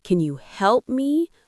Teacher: with strong stress on help, it might sound frustrated